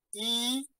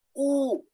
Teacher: La diferencia entre I y U, ¿no? Es que una es no redondeada, y otra es redondeada